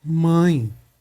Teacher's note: eu leio com som de i tem um uma nasalização zinha aqui né